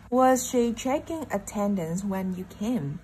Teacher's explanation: Mình có chữ checking, nhấn trò trọng âm 1 ha. Tiếp theo, attendance là một danh từ, cũng nhấn vào trọng âm 2 nè. Rồi, tiếp theo, when là từ chỉ thời gian nên cũng nhấn.